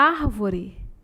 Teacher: E proparoxítona é a antepenúltima sílaba mais forte.